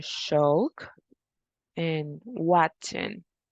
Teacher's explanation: it is a voiceless palatal affricate